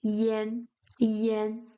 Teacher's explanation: when pronounced together it sounds more like yen yen. It's a slightly open A. It's way near to the A, but it still sounds Yen Yen.